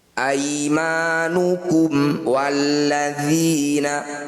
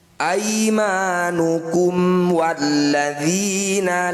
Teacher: bunyi mim sukunnya baca dengan jelas rapatkan bibir tidak usah dengung aimanukum walladzina pastikan bibir rapat di sini aimanukum walladina lam yablughul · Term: izhar syafawi